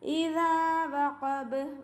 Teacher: ഇദാ വഖബ് ഹംസയെ ക്ലിയർ ആക്കുക. ദാലിൻ്റെ കൂടെ അലിഫ് മദ് ഉണ്ട്, അപ്പോൾ രണ്ട് കൗണ്ട് നീട്ടുക